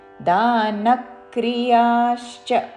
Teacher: న మీద ఆఘాత పలుకుతూ